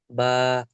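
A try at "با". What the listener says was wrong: হ্যাঁ শোনেন, বাকে আরেকটু পাতলা করতে হবে। ব্যা, ব্যা, স্বাভাবিক, ব্যা।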